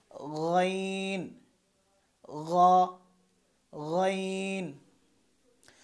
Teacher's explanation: খ যেখান থেকে উচ্চারণ করেছিলাম ঠিক সেখান থেকেই গইন উচ্চারণ হবে, অর্থাৎ হলকের শেষ থেকে